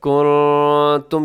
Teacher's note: نون ساکن کے بعد تا ہے، تو یہاں بھی آپ نے اخفا کرنا ہے اور آواز کو ناک میں چھپانا ہے